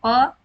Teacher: प जब हम बोलते हैं तो हमारे होठ आपस में मिलते हैं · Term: ओष व्यंजन